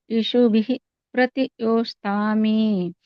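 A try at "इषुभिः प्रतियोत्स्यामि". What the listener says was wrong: ನೀವಲ್ಲಿ ಇಶುಬಿಹಿ ಅಂತ ಹೇಳಿದ್ರಲ್ಲ ಅದಒಂದು ಸ್ವಲ್ಪ ಇಶುಭಿ ಅಷ್ಟೇ ಇಶುಭಿ ಪ್ರತಿಯೋಮಿ ಸ್ವಲ್ಪ ಹ ಬರಬೇಕು ಅಷ್ಟೇ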